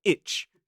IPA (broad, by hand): ɪtʃ